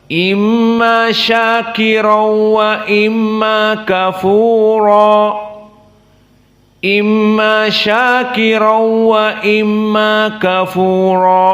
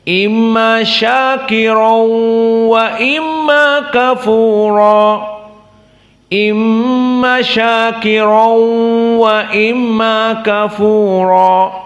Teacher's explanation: di sini kita katakan tidak ada apa-apa hanya idgham saja dan makna idgham dimasukkan tanwin kepada wau dan tidak ada dua harakat gunah dari hidung